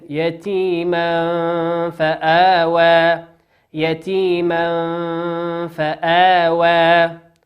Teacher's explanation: تنوين أتى بعده حرف الفاء والفاء من حروف الإخفاء